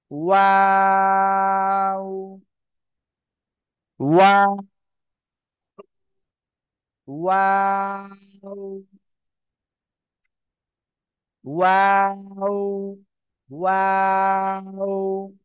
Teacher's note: প্রথমে গোল হবে, মাঝখানের দিকে কি দুই ঠোঁট গোল হবে না, আবার শেষে এসে গোল হবে কিন্তু।